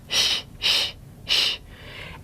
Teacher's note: If this sound is in your native language, which it is in English, sh, it actually has lip rounding